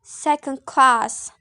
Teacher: it is actually has the same pattern with the previous one the primary stress is on the second word and the secondary stress is on the first word